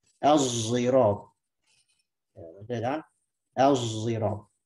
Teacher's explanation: Nah, satu lagi yang pakai dengan isma musadi zayan. Mencampur shad jadi zay.